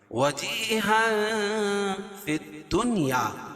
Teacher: وجیہا فی الدنیا والآخرہ، وجی یا مدہ، یا ساکن سے پہلے زیر ہے تو یا مدہ اس کو ایک الف کے برابر کھینچ کے پڑھیں گے، اور تنوین کے بعد حروف اخفا کے 15 حرفوں میں سے فا ہے تو یا ناک میں آواز کو چھپا کر پڑھیں گے